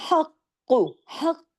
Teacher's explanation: ह गले से काफ मोटा और काफ पे तशदीद है। डबल काफ है। हक सख्ती से जोड़ना है।